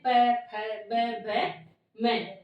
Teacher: हमारे दोनों होट है वो बंद होते है जब हम इनको उस वर्णों का उच्चारण करते हैं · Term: ओष्ठ्य वर्ण